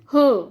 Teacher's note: स्वर यंत्रीय, स्वर यंत्र से, ठीक है। ह मतलब हमारे गले के अंदर से ही आवाज़ निकलती है, जीभ कहीं नहीं टकराती है, वो होते हैं स्वर यंत्र।